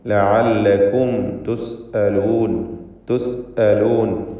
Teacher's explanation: തുസ്അലൂൻ, ഹംസ ശിദ്ദത്തോടു കൂടി ഉച്ചരിക്കുക. തുസ്അലൂൻ എന്ന് പറയരുത്, തുസ്അലൂൻ എന്ന് വ്യക്തമാക്കണം.